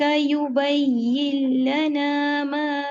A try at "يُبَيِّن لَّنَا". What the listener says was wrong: یا مشدد میں آواز کو چلائیے. ساتھی ساؤنڈ نہیں، نہیں سختی سے نہیں، نرمی سے. اس کے مخرج میں نرمی رکھیے. یبین لنا.